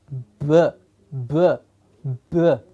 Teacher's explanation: Because the vocal cords have to vibrate to give us a b, b, b.